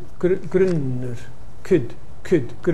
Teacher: could is moving in the direction of kit but it's retaining its rounding so you're saying could but kid and it's bit like the